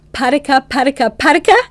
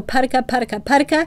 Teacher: And we use that because we want to pair consonants at the with a vowel at varying places in the mouth. So you start with the consonants that are made toward the front of your mouth with the P, and then you move to mid mouth with the T, and then the back of your mouth with a K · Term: diadochokinetic rate